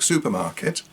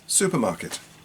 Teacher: Of course, with longer words, we stress particular syllables. So if we take supermarket, we're stressing su and ma